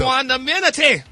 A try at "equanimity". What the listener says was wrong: Okay, you said that right, but you added another NIH after ma.